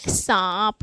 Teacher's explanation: सा बोलने पे आ निकल रहा है ना मतलब मुंह और नाक दोनों पर बल जा रहा है तो यह है अनुनासिक ये भी है देखिए सांप ना सांप